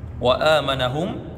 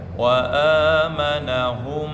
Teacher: mim sukun bertemu dengan mim. Nah, maka idgham mimi ditahan lagi 2 harakat